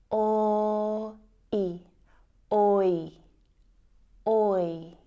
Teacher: Compare that monophthong sound, which is just one sound, with the diphthong sound, oi, which is 2 sounds combined to make one sound. So the oi diphthong sound is actually made up of the o and I vowel sounds.